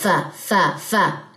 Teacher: ہمس، یعنی کہ آپ کا سانس جاری رہے گا